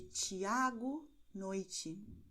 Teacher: o som será de TI e TE transformado em TS